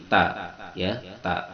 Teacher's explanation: makhorijul huruf ta berada di ujung lisan yang disentuhkan pada pangkal gigi seri yang atas tempat tumbuhnya gigi